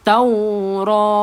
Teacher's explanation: Matikan ta marbutah itu kepada huruf ha.